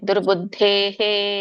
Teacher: ಮುಂದೆ ವಿಸರ್ಗ ಇದ್ದಾಗ ಹಿಂದಿನ ಒಂದು ಪದದ ಸ್ವರ ಏನಿರುತ್ತೋ ಅದೇ ರೀತಿಯಾಗಿ ವಿಸರ್ಗದ ಉಚ್ಚಾರಣೆ ಇರುತ್ತೆ ಹಿಂದಿನ ಪದದ ಸ್ವರ ಏನಿದೆ ಎ ಇದೆ ಸೋ ಹಾಗಾಗಿ ವಿಸರ್ಗ ಕೂಡ ಹೇ